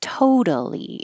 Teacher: in the word by itself, the syllable to is stressed. Totally. It's not totally, totally. · I'm going higher in pitch and longer in duration. And I'm stretching the vowel in the stressed syllable. So in the first one, totally, in the word by itself, the syllable to is stressed.